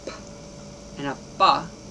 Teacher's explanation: the P sound gets created because I hold the air behind my lips and then I release it and the force of the air coming out makes that sound